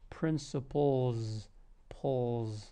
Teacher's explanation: this s actually turns into a z sound or you're actually using your voice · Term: voiced s